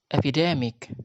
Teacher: the first syllable, which has lowered vertical line, is the secondary stress, and the primary stress is on the third syllable or on the second from the last syllable.